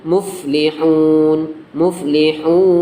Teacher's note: Ini dibaca panjang, panjangnya 6 harokat atau 3 alif. Bacaan mad arid lis sukun, baru datang, nun sukunnya baru datang ketika wakof saja, tapi secara tulisannya hidup, ketika berhenti mati.